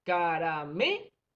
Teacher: Caramelo, ubicamos la sílaba más fuerte que sería me.